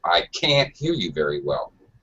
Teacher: make sure that you use a little higher pitch when you say can't from the rest of your sentence